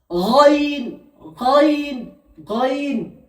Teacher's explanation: এই গইন উচ্চারণ হয় গলার শেষ অংশ থেকে